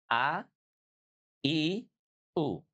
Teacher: Kalau huruf hamzah bunyinya ditekan karena punya sifat syidah. · Kalau hamzah dia dari pangkal tenggorokan. Aqsal halqi.